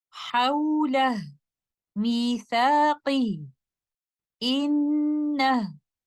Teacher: we recite ha al-dhamir upon stopping with a pure sukoon